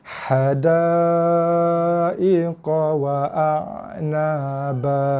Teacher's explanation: Ain dia bunyi dia berekor sikit.